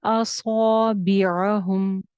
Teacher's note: स्वाद के साथ का अलिफ भी मोटा करें। असौबिअहुम, हुम की मीम पे गुन्ना करना है मैंने कि नहीं करना।